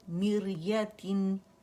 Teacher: را سکون سے پہلے ہمارے پاس اوریجنل کسرہ آ رہی ہے تو را باریک پڑی جائے گی. ٹھیک ہے، میریتن، میر ایم آئی آر، میر نہیں پڑھیں گے، میم کسرہ می ہے.